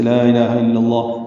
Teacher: صرف لفظ اللہ کا جو لام ہے وہ پر ہے، باقی لام باریک ہے۔ لا الہ الا اللہ وقف کریں گے تو یہ لام اس میں ذرا لمبا ہو جائے گا۔